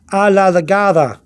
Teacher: remember the D, between the two vowels, has to be a D and a slight TH sound